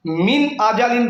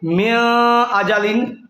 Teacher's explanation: حمزہ حروف حلقی میں سے ہے اس لیے گننا نہیں ہوگا. من آجالین پڑھیں گے، میاں آجالین نہیں پڑھیں گے.